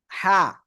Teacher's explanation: হা গলা চেপে উচ্চারণ করতে হয় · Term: পূর্ণরূপ হা